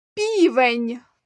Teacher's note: як ми вимовляємо перший приголосний звук п півень правильно м'яко